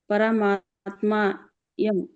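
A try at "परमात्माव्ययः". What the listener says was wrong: ಯಂ ಬೇರೆ ಹೇಳಬೇಡಿ ಪರಮಾತ್ಮಯಂ ಕೂಡಿ ಹೇಳಿ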